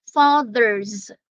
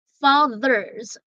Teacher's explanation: the TH there is hard and the S there is pronounced as Z